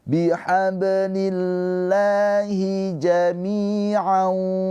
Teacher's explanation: Mi panjang dua harakat ya. Dia kasrah setelahnya ya sukun. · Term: Mad thobi'i